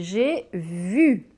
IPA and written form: ʒe vy (I SAW)